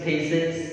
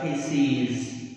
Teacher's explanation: So in singular we have a short vowel is, और जब plural बनाते हैं तो लिखने में es होता है, लेकिन प्रोनाउंसिएशन में उसको लॉन्ग वावल लॉन्ग करके e प्रोनाउंस किया जाता है